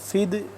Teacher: یہ ہے دال ساکن تو اس پہ ہم قلقلہ کریں گے